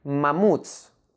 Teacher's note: Like in the word mamuts, made up of two syllables, ma and muts. The last syllable, muts, is the stressed syllable.